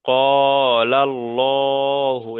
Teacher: তাহলে এখানে লামের উপরে জাবার এসছে, আল্লাহ শব্দের পূর্বে লামের উপরে জাবার এসছে, এই লামটাকে, এই আল্লাহ শব্দটাকে পুর করে পড়তে হবে, অর্থাৎ ল করে পড়তে হবে